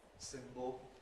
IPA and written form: ˈsɪmbl̩ (symbol)